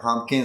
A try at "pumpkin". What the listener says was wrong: So pumpkin. So the P in the middle is not super clear. Pumpkin. So pumpkin. Relaxed A.